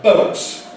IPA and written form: bəʊt (boat)